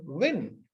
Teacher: it's kind of a lip rounding it's not burst sound you bite your lip here you round your lips right so